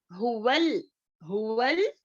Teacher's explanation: अक्सल हलक, यानी कि हमारे गले का अंदरूनी हिस्से से अदा हो